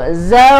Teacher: Baru matikan dengan jim, ada qalqalah. · Zaw di sini, kalau kita berhenti bacaan, panjang 4 harakat. Okey, dia 2, 4, 6 harakat, tapi kita ambil 4 sahaja untuk permulaan.